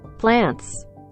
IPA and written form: plænts (Plants)